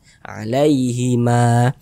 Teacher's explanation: Sebelumnya nih ada huruf yang memiliki tanda baca fathah, sehingga huruf sebelumnya dibaca panjang. Sehingganya ma dibaca panjang. Mad tabi'i panjangnya 2 harakat.